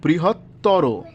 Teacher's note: তরতম প্রত্যয়ন্ত শব্দের অন্ত অ এর উচ্চারণ ও এর মত হবে যেমন বৃহত্তর তাহলে উচ্চারণটা কেমন হবে বৃহত্তর যত সুন্দর করে ভাঙ্গা